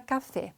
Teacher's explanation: o acento tónico recai na última sílaba · a sílaba tônica é o fé. Então, essa como traz o acento gráfico, fica muito mais fácil de eu reconhecer qual é a sílaba mais forte, certo? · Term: oxítona